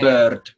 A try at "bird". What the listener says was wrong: Pay attention, no es una E. No la llevamos a la E, la llevamos al centro. La lengua tiene que moverse un poco al centro.